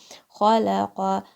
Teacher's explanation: Qaf comes from the back of your tongue. It's close to the top of the throat, but it is still your tongue, back of your tongue.